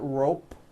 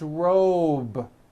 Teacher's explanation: robe also has a voiced b ending it's not rope with an unvoiced p